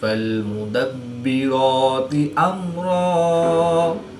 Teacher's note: रा के ऊपर खड़ी ज़बर है, तो रा को पुर यानी मोटा पढ़ेंगे। मीम साकिन के बाद हर्फ बा और मीम के अलावा हर्फ रा है, तो यहाँ पर इज़हारे शफ़वी होगा यानी गुन्ना नहीं करेंगे।